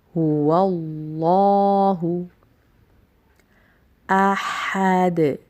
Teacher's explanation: ہا کی ادائیگی درست کیجیے، وسط حلق سے نکلے گا یہ. احد، دال کے اوپر وقف کی صورت میں قلقلہ ہوگا.